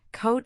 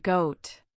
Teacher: For coat, the sound is unvoiced, just air. For goat, it is voiced, with your vocal cords vibrating. This contrast between K and G is essential.